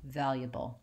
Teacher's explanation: So still I would have my stressed val, and I would do valuable, and I would leave out this schwa and go right from the ya to the bull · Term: dropped syllable